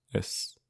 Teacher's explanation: It's spelled is, but I'm pronouncing it with a broad S. This is an irregularity in Irish spelling, and you'll see in some older documents it's spelled as, but that's not at all common these days.